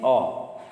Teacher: अब देखिए विवृत में अ, जीभ नीचे ठाव में, एकदम जीभ सबसे नीचे अ बोलते हैं। तो आप उच्चारण करके देखिए, आपका जीभ नीचे चला जाता है।